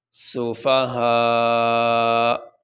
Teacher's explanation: اب یہاں پہ یہ وقف کا نشان یہ تو پڑا ہوا ہے، یہاں پہ ہم وقف کریں گے تو وقف کرنے کی صورت میں آخری حرف کو ساکن پڑھا جاتا ہے، تو یہاں اس کا آخری حرف جو ہے وہ حمزہ اور حمزہ کے اوپر پیش ہے، تو جب ہم یہاں پہ وقف کریں گے تو حمزہ کے اوپر جو پیش ہے وہ نہیں پڑھا جائے گا، حمزہ کو ساکن پڑھا جائے گا۔